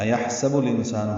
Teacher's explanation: حمزہ اقصی حلق سے بالجہر ادا کریں گے، ہاں ساکن پہ ہمس ہوگا